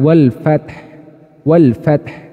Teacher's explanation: bunyi hak sukun itu teman-teman cara membacanya itu mirip dengan suara pernafasan